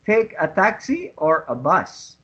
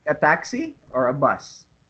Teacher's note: it always goes up the intonation and then the intonation falls down on the second one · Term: rising intonation